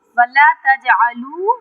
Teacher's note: جیم پہ قلقلہ کریں گے کیونکہ جیم ساکن ہے، اور قلقلے کے معنی ہوتے ہیں جنبش دینا، ہلانا